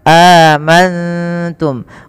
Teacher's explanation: nun sukun bertemu dengan ta ikhfa cara membacanya nunnya samarkan kepada huruf ta amantum bukan hanya amanttum kalau mangtum maka dia berubah daripada makhrajnya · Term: Ikhfa Hakiki